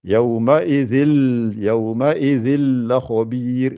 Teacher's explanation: le lam et le ra, en situation de idgham, il n'y a rien qui sort par le nez